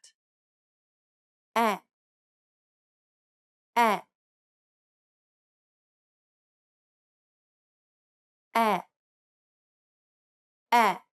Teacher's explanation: It's a short open e- like sound similar to the sound the a makes in the word at